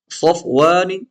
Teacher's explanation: صفوان صاد میں سیٹی کی آواز آئے گی اور موٹا پڑھا جائے گا